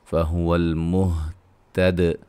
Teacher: وقف کی صورت میں دال پہ قلقلہ واضح کریں گے